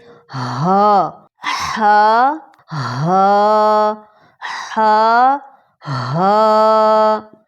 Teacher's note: بھاری آواز سے نکلتی ہے لیکن اس میں گلے میں رگڑ نہیں لگتی